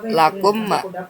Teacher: mim dilebur dengan mim dan ada dengung 2 harokat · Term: idgham mislain syafawi